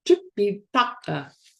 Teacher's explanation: Actually, I have to do a retroflex T.